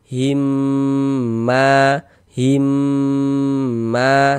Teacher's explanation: Jadi di bagian himnya itu suaranya itu kita tahan ya, kita panjangkan sebentar sepanjang dua harakat. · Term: didengungkan